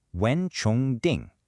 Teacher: Second tone, second tone, first tone.